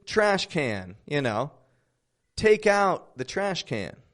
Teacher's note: when can is a noun it's of course going to be fully pronounced because now it's a noun you know now it's a subject